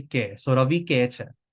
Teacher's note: H's are often dropped in Gujarati, or they're like kind of like swallowed or not pronounced